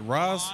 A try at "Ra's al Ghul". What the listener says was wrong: Ra's al Ghul. R-A apostrophe S is pronounced Ra's. There's no S-H in there. There's no Ra's. R-A apostrophe S.